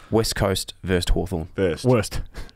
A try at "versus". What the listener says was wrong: You really emphasised a T in there. There was a T.